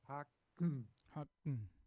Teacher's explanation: with the nasal plosive, which is the back of the throat, and instead of opening to the front through the mouth, you're opening through the nose.